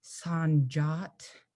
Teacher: i'm making my voice go higher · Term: high tone